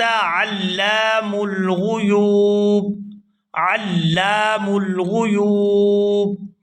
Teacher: لام کو الف مدہ کی وجہ سے کھینچ کر ادا کریں گے۔